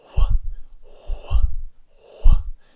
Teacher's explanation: wh is a voiceless variety of the letter W so it's almost the same as W but it's not it